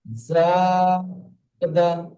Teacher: আলিফ মাদ্দাকে জি একালিফ পরিমাণ টান দিয়ে পড়তে হয়।